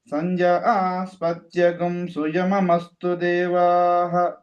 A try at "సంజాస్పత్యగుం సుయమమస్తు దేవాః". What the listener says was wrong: సంజాస్పత్యగుం అనుదాత్తం.